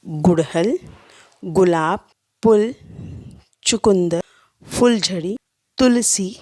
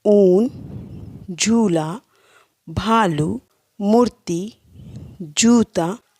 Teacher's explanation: छोटा ऊ ह्रस्व स्वर होता है और बड़ा ऊ दीर्घ स्वर। छोटा ऊ को बोलने में कम समय लगता है और बड़े ऊ को बोलने में अधिक समय लगता है।